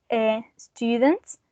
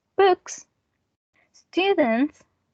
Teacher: the t is voiceless so the following sound it's going to be voiceless as well